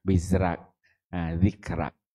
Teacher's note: sebelum huruf tu adalah huruf berbaris bawah sifat dia nipis jadi dia baca dengan nipis